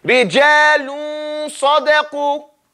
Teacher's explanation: get that noon almost pronounced, then you start with the sad, within two counts